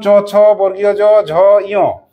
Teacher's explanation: তালব্য। কেন তালব্য বললাম? জিভটা তালুতে স্পর্শ হচ্ছে।